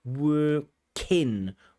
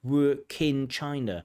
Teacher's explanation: So we really want that workin. That k should join the word in.